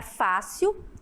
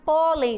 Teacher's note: Sílaba tônica, né, pronunciada com mais intensidade na penúltima sílaba. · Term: paroxítonas